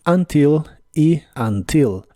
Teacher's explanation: esta palabra puede tener el acento en la primera sílaba o en la última